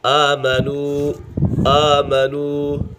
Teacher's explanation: آمنو، آمنو، یہاں پر کھڑی حرکات حروف مدہ کا قائم مقام ہے۔ کھڑی حرکات کو حروف مدہ کی طرح ایک الف یعنی دو حرکات کے برابر کھینچ کر پڑھیں گے۔ آمنو، یہاں پر واو سکن سے پہلے پیش ہے تو یہاں پر واو مدہ ہوگا۔